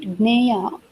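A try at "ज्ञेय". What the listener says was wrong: Jnaya. No, Jnaya. Ja and no, not Naya. It is Jnaya, Ja and Jna, like Jnanam. No, you should not pronounce the Na. You should say it's like Jnanam.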